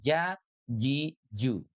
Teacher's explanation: Kalau ja itu dari tengah lidah